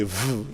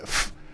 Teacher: if you pronounce say V you feel the vibration in there and uh F has no vibration